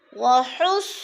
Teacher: صاد موٹے حروف میں سے ہے اور صاد مشدد ہے، شد کا دوسرا نام مشدد، سختی سے پڑھیں گے. وحصل، اور پر کر کے.